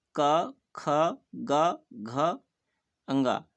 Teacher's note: इन सभी वर्णों का उच्चारण स्थान कंठ है इसलिए इन वर्णों को कंठ वर्ण भी कहते हैं